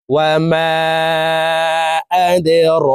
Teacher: র খারা জবর র, রর উপরে খারা জবর আছে, তাই এই র হরফকে এক আলিফ টেনে পড়ব।